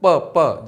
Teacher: जब आप प बोल रहे होंगे तो आपको दिख रहा होगा कि आपके दोनों ओष्ठ स्पर्श कर रहे हैं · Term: ओष्ठय